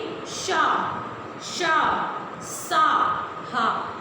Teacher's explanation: ऊष्म गर्म वायु निकलती है, किंतु मुख के कोई भी भाग आपस में स्पर्श नहीं करते हैं। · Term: ऊष्म व्यंजन